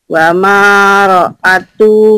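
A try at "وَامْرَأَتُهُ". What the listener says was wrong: kenapa wama? Kan mimnya mati. Wam gitu Bu. Itu alifnya nggak dibaca. Ya, kan nggak ada tandanya. Wam ro'atuhu. Wam ro'atuh.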